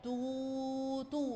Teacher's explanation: الكلمة الأخيرة تو تو، ضمينا حرف التاء طويل شوية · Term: المد بالواو